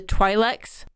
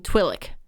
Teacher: The apostrophe is pronounced with a throat stop. So you have the Twi'leks, which have a little bit of that throat stop instead of being Twi'lek, where it's all one combined word.